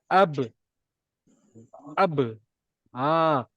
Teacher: Jadi ingat balik saya cakap pasal melantun tu. Jadi bila bibir ni bertemu, dia akan melantun.